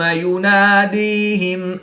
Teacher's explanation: یا ساکن سے پہلے دال کے نیچے زیر ہے تو یہ یا مدہ، اس کو لمبا کر کے ایک الف میں 2 حرکات کے برابر کھینچ کر پڑھیں گے۔